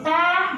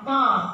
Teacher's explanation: ketika kita cuma menebalkan huruf ta jadi to. Dibantu juga biasanya to atau so atau do, huruf dal kita tebalkan.